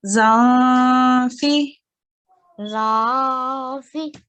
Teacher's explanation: But when you say the zan with an ikhfa, you take your tongue away from the place where you're saying noon, and it has to just sound slightly nasalized. You can send the sound into your nose · you take your tongue away from the place where you're saying noon, and it has to just sound slightly nasalized. You can send the sound into your nose in order to do it correctly.